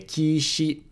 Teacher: the e sound in key can be devocalized